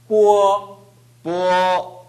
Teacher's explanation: 뽀보다는 어가 더 강해야 돼요.